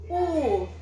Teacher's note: os meus lábios se arredondaram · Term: arredondadas